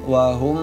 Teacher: mim sukun bertemu dengan ba, dibacanya samar di bibir, ikhfa syafawi.